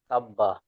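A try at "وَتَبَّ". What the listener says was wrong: ওয়া তাব্বা পড়েন, ওয়া তাব্বা, ওয়া তাব, ওয়া তাব, সাকিন হয়ে যাবে জাবারটা। বানানটা যেহেতু করছি যেহেতু, তাহলে কি হবে, ওয়া তাব্বা, ওয়া তাব।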